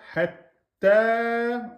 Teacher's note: On a la lettre ta avec shidda, donc hatta, plus un alif maksura, donc deux temps, donc shidda plus deux temps. Hatta, on bloque le ta. Hatta, avant de sortir la voyelle en deux temps.